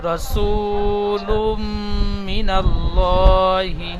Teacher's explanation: ওমাদ্দা একটি আলিফ টান দিয়ে পড়তে হয় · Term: এক আলিফ টান